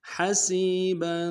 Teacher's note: با کے اوپر تنوین غنہ کریں گے